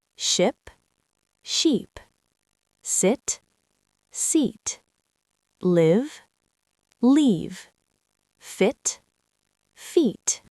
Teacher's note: For example, the difference between ship and sheep is just one tiny change in the tongue position. Right, ship has a short i sound like in sit or bit. Sheep has a long e sound like in sea or tree.